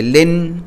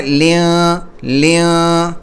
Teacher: اب دیکھیں زبان اوپر کو ہے، تو اب جو ہے زبان کو ہمیں اینڈ میں نیچے ہی رکھنا ہے اور تنوین کی آواز کو ناک میں چھپانا ہے. ٹھیک ہے، تو لن کی بجا پڑھنا ہے لیاں لیاں. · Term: اخفا